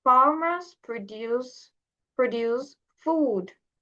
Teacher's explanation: The stress is on the second syllable, which is a verb and means to make something